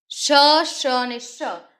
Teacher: શ અને શ, આ જે શ બોલતા સીટી વાગે છે એનું કારણ એ છે કે હવા ઘસાઈને બહાર આવે છે માટે એને સંઘર્ષી ધ્વનિ કહે છે.